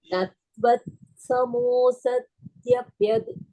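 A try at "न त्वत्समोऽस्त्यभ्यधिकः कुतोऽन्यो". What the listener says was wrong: சத்ய வேண்டாம். சத்ய இல்ல, ஸ்த்ய தான். நத்வத் சமோஸ்த்யப்யதிக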